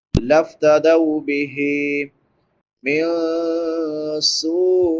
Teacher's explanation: نون ساکن کے بعد حروف اخفاء میں سے سین ہے تو یہاں پہ اخفاء ہوگا۔ سین کے بعد مد متصل ہے، حمزہ اسی کلمہ میں ہے، اس کو 3 الف کی مقدار کے برابر ہم لمبا کریں گے۔